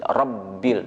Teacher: Ba di situ ada tasydid, ya, rabbil, maka dikuatkan sedikit rabbil, dan ba itu betul-betul huruf yang ada di bibir, ya, huruf ba ada yang di bibir. Jadi betul-betul menutup kedua bibir tersebut.